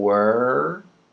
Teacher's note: We're rounding the lips for the w, and then we're bringing everything back